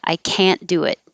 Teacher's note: if it's negative now you will hear the vowel ah can't but you won't hear the t i can't do it it'll sound like can i can't do